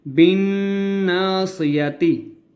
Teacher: با کو جب ہم نون کے ساتھ ملائیں گے تو نون کے اوپر تشدید ہے تو ہم نے یہاں پہ غنہ کرنا ہے